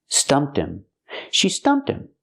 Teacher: The H is silent, so you hear stumped him. Pronounce the T and link to Tim.